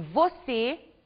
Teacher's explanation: na palavra você nós observamos a pronuncia fechada da última vogal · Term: pronúncia fechada